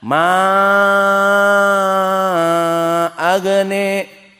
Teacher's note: Majaiz munfasil ma agna dibaca 6. Dan agna sama seperti Al-Kisai dibaca sebagai imalah menjadi ma agne. Setiap ismun maksur alif layyinah yang sebelumnya fathah dibaca al-imalah.